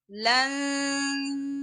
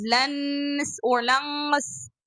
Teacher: make sure the tongue on that position should be going to the sin articulation point and not touching any part from the noon articulation point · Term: noon is hidden